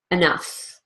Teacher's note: even though it's spelled with an E it's really a completely unstressed syllable